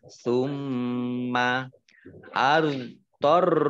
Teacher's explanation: roknya dibaca double, ada tasdidnya